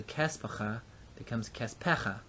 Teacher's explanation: The accent is retracted, the vowel is lengthened.